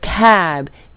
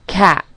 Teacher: devoicing the final sound, which is what it is called when a final voice sound is turned into a final voiceless sound.